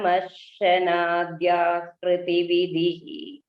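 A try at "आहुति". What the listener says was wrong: It is not Hriti Bhagini, it is not Ahriti, it is Ahuti. It is not Hritu.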